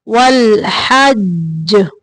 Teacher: جیم پہ تھوڑی دیر رکیں گے کیونکہ جیم مشدد ہے